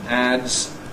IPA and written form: ædz (adze)